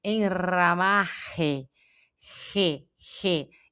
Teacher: Esse sai daqui, ó, re, sai como um vento da boca, aqui da garganta, como se fosse 2 R's de carro